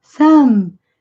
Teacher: A palavra termina com som de M. Boca fechadinha, lábios se tocando.